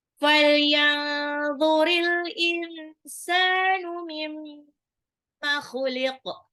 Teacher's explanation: Mimma, tahan juga karena guna khuliq, kok-nya ngorok. Dan qaf-nya pantul